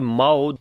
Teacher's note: this waw we read in soft sound. This is waw lean.